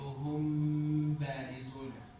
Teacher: I'm gonna connect it into the ba so that even if I know that there is a meme there, I'm passing over it and going into the ba. So hum barizuna. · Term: Ikhfa